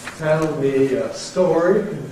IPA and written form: ˈtel mi ə ˈstɔːri (Tell me a story)